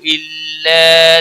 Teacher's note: امیرو یہاں پر بھی مد منفصل ہے، 3 الف کے برابر کھینچ کر پڑھیں گے۔ الا مد ہے، الف مدہ یا ایک الف کے برابر کھینچ کر پڑھیں گے